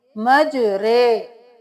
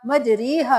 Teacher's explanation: अमूमन हम रा खड़ी जेर को री पढ़ते हैं, रा खड़ी जेर री, लेकिन पूरे कुरान में एक ये हर्फ है जिसको हम री नहीं पढ़ेंगे बल्कि टेढ़ा करके पढ़ेंगे, मजरे। इसको हम अमाला बोलते हैं।